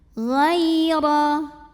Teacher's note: Wasma' ghai, ghai ada huruf lin, karena ada ya sukun yang didahului baris fathah, maka cara bacanya cukup kita lembutkan. Ghaira, huruf ra dibunyikan secara tafkhim, karena ra-nya ini barisnya di atas fathah, maka dibacanya tebal.